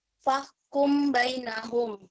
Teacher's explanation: membacanya harus dibunyikan samar-samar di bibir dan didengungkan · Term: Ikhfa Syafawi